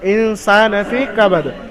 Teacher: ইনসান ফি কাবাদ, তো সিনের উপর খারা জাবার আলিফ মাদ্দা সমতুল্য, খারা জাবার আলিফ মাদ্দা সমতুল্য, তাই সিনকে এক আলিফ পরিমাণ টান দিয়ে পড়তে হবে।